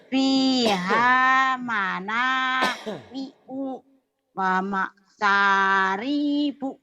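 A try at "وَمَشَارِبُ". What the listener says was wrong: Ri-nya pendek. Wa masyaribu. Wa masyaribu.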